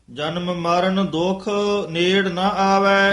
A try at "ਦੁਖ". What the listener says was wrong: ਹਾਂ, ਦੁੱਖ ਪਦ ਤੇ ਠਮਕ ਲਾਉਣੀ ਹੈ।